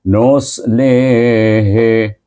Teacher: hi itu pangkal halqa bunyinya bergementar sikit, iaitu kuat bunyinya gegarannya. Kemudian na, nun bertemu dengan alif, baca dengan mad asli.